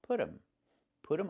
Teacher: And you hear um instead of them. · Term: reduction